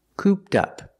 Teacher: Pronunciation, cooped up. The ED is pronounced with a T sound. Link it with the next word, tup, cooped up.